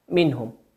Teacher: النون في كلمة منهم هي نون ساكنة أتى بعدها حرف الهاء فأظهرناها